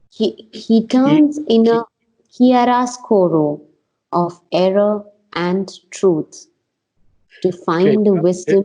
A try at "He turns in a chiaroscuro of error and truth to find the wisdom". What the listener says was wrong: Okay, now there's something I want to stop right here, because You are tending to drop the last word of the line. And I've heard people do that many times.